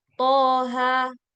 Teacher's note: Cara membacanya dipanjangkan 2 harokat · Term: mad tabi'i harfi